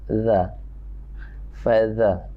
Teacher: Za bukan za ya. Ujung lidah, ujung gigi atas.